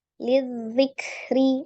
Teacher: Lidzikri ya, itu langsung ditasdidkan ke huruf zal. Hati-hati, zal sifatnya adalah roghah, maka jangan diputuskan seperti huruf dal. Liddi kalau dal ya, tapi kalau ini zal disambungkan lidzikri.